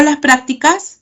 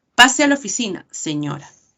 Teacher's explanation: Porque están presentes los signos de interrogación. Estas preguntas son ascendentes, responden a un sí o un no.